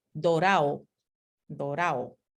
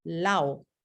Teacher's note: en muchos dialectos se elide por completo la d intervocálica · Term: elisión